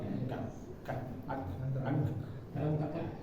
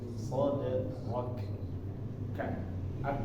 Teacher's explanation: Huruf kafnya angin loncat sedikit.